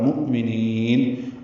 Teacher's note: مؤمنین حمزہ ساکن جھٹکے سے ادا ہوگا